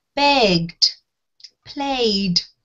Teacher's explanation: So we don't add a syllable, okay? So we use the D sound when the sound before the ED is buzzy or voiced